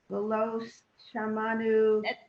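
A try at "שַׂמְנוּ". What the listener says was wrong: That's a sin. That's if the dot is on the left side, so it's a sa. Samanu.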